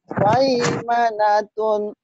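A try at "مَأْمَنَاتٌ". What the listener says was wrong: Kalau mai enggak boleh diayun. Langsung maimanatun kan namanya huruf di jadinya ai gitu ya kemudian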